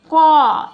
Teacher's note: ক ঘ এটা কিন্তু উম না অনেকে উম উচ্চারণ করে এটা উম না এটা হচ্ছে উই পাশটা হচ্ছে আমাদের কন্ঠ বর্ণ বা কন্ঠধনি এই কন্ঠ বর্ণ কেন এটা এটা উচ্চারণের সময় দেখো ক এটা একেবারে গলার ভিতর থেকে কন্ঠের ভিতর থেকে এ আওয়াজটা আসে